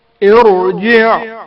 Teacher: ساکن حرف را کو تفخیم یا موٹی آواز میں پڑھا جائے گا۔